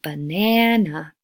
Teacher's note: in a sentence and just focus on one peak vowel sound so if you've got a word like banana the peak is the second syllable